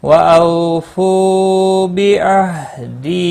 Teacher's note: او واو لین ہے، تھوڑا نرمی کے ساتھ کھینچ کر ادا کریں گے۔